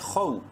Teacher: گے الف مدہ کی وجہ سے، ولا، خا واو زبر خو، خا کو منہ بھر کے پڑھیں گے، بولڈ لیٹرز میں سے ہے لیکن شارٹلی پڑھیں گے کیونکہ واو لین ہے